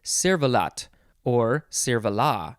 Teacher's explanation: you don't have to pronounce the T at the end because it is French